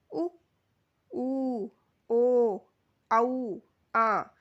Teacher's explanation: दूसरा है वृतमुखी। वे स्वर जिनके उच्चारण करते समय होठ गोलाकार होते हैं।